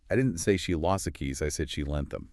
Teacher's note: the stress on lost versus lent. It just immediately points to the difference. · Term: contrastive focus